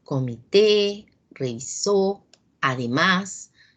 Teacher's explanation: llevan la mayor fuerza de voz en la última sílaba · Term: palabras agudas